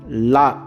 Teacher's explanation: நாவின் இரு பக்கங்கள் தடித்து மேல் பற்களின் அடியை தொடுவதால் லகரம் தோன்றும்